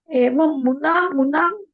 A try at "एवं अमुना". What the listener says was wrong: एवं अमुना, मुना नहीं है यहाँ पर, मुनि उनी नहीं है।